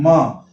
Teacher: होंठ हमारे बंद होते हैं और होंठ के बाद नाक से ध्वनि निकलती है म। देखिए हम म बोल रहे हैं तो होंठ भी बंद हो रहे हैं और नाक से आवाज निकल रही है।